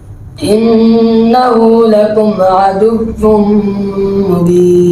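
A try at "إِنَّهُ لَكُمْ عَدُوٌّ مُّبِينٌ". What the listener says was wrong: दूसरा अदुव्वुम, गलत। देखो ना, आपके ऊपर के दांत होंठों से टकरा रहे हैं तो इसलिए अदुव्वुन हो रहा है, ये अदुव्वुन नहीं है, अदुव्वुम। अदुव्वुम, वाव में होंठ गोल होते हैं।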